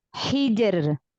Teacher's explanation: Maka ini dibaca tarqiq, dibaca tipis, ro-nya dibaca tipis.